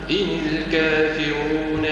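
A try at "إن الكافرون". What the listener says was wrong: فخم الراء ان الكافرون رون رو رو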